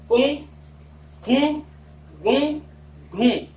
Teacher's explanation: अनुनासिक अच, यानी व्यंजन के साथ अगर अनुनासिक अच का संयोग हो जाए, ऐसे वर्णों को हम यम कहते हैं। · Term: यम वर्ण